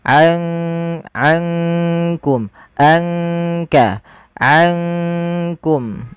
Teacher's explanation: Kalau idgham itu memasukkan, sedangkan ikhfa di antara keduanya, di antara izhar ataupun idgham. Maka ankum langsung kepada makhraj disamarkan kepada makhraj kaf.